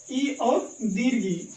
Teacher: इन दोनों स्वरों का उच्चारण दोस्तों याद रखेंगे तालु से होता है